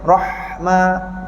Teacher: masa kita sebut roh, angin ha nak lama sikit. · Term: hamas